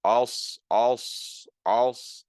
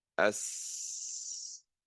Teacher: the sound, not only does it go up in your mouth, but it gets stuck between your upper palate and your tongue. So you're saying als, als, you can see that it's as if the sound and the air is sort of getting stuck to a certain extent between your upper palate and your tongue. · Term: al-Itbaq